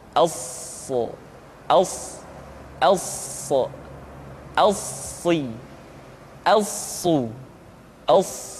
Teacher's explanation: Untuk memudahkan pengucapan huruf sa, Perhatikan sifat as-safir yang dimiliki oleh huruf sha, yaitu suara tambahan yang terdengar menyerupai dengan suara angsa